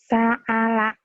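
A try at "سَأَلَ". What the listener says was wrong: Bukan ain, itu hamzah. Sa'ala. Sa'ala, A ya.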